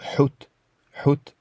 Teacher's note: la lettre 7 qui se prononce ha c'est un H fortement expiré